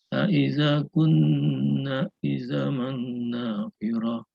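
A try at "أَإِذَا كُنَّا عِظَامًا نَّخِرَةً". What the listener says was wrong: Idhaman Nunnya pendek. Nakhirah. Nakhirah. Aiza kunna idhaman nakhirah.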